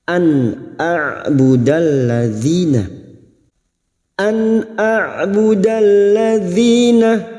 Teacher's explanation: Nun sukun dibaca jelas tanpa mendengung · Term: idhar halqi